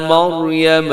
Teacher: مریم میں را موٹی رکھیے گا